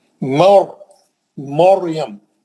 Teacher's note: मुंह भर के पढ़ना, क्यों, रा साकिन से पहले मीम पे जबर है,